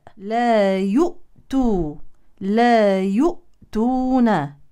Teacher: يؤتون ننتبه للهمزه الساكنه نحذر من القلقله لا تقلقل لا يؤت نغلق الحبلين الصوتيين حتى نصل الى التاء